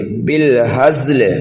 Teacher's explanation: تو زا کی آواز سیٹی کی طرح نکالیں گے، بالہزل، یہاں پر وقف کریں گے تو وقف بالاسکان ہوگا۔